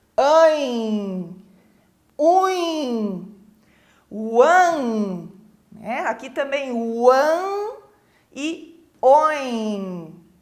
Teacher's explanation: esse som sai pela minha boca, mas eu sinto ele também saindo pelo nariz. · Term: som nasalizado